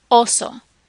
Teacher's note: you'll notice that O sound is much shorter and pure, more of a pure sound than the English equivalent